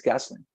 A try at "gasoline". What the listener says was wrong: No line, as if you're saying like line, a straight line, not line. Gasoline, just gasoline.